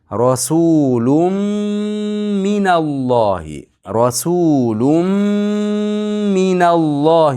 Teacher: tanvinni mim ichiga kirgizamiz